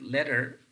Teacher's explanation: this ra is basically functioning as a syllabic sound